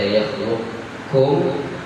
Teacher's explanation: nampakkan ketebalan huruf qaf seperti la in basat tadi, hilangkan qalqalahnya, lalu dibaca kaf setelahnya. Tapi ada juga yang baca idgham betul-betul idgham tam, idgham kamil di situ. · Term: idgham naqis